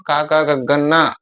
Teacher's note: ಕಂಠದ ಸಹಾಯದಿಂದ ಉತ್ಪತ್ತಿ ಆಗುವ ಅಕ್ಷರಗಳು ಕಂಠಾಕ್ಷರಗಳು